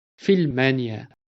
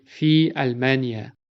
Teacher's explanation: we are cutting the a sound right in between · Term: hamza of cutting